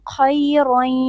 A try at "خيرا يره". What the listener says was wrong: خيرا يره. Kha is heavy. So khay and then ra is also heavy. Khayran yara. You're saying khay. No, it's kha. Khayran yara.